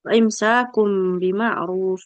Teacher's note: Karena mim itu pertengahan antara nun sukun dan nun dan ba. Mim dengan ba satu makhraj sama-sama di dua bibir. Kemudian mim dengan nun sama-sama punya satu sifat yaitu gunnah dan sama-sama di al-khaysum ya. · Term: iklab